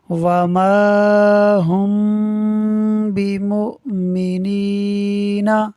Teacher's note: میم ساکن کے بعد حرف با ہے، اخفاء شفوی ہوگا، یعنی میم ساکن میں غنہ کریں گے، ملا کر پڑھیں گے۔